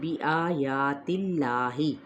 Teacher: آ اور یا کی ایک جیسی مقدار ہوگی کھینچنے کی یعنی لمبا کرنے کی